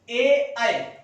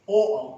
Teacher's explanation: ए आई कंठ तालु के सहयोग से, ओ औ कंठ और ओष्ठ